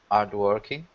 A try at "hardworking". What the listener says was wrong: Listen to the H. Hard.